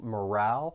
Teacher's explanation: the stress is on that second syllable